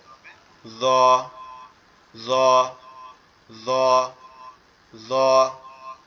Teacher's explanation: জিহ্বার আগা সামনের দুই দাঁতের আগার সঙ্গে লাগবে, লেগে উচ্চারিত হবে জ, জ, জ, জ।